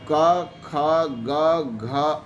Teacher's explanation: क वर्ग के वर्णों को कोमल तालव्य वर्ण भी कहा जाता है, क्योंकि ये जो कंठ होता है, तो जहाँ कंठ समाप्त होता है वहीं से तालु का जो है भाग स्टार्ट होता है, जो कोमल होता है।